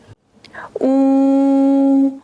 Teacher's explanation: U, rounded lips, high tongue.